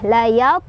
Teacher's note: Cara bacanya pantulannya kecil aja. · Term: qalqalah sughra